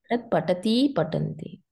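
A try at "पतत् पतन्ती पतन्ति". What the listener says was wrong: No, patat patanti patanti. No, patat, patanti, patanti. No. That is not the point. You said patat, patati, patanti.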